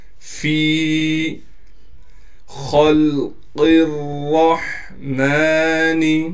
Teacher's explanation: سے ہے لہٰذا فا کو ایک الف کی مقدار کھینچیں گے، خا کو موٹا کر کے پڑھیں گے اور خا کو ہم لام سے ملا لیں گے اس لیے کہ لام پر ساکن ہے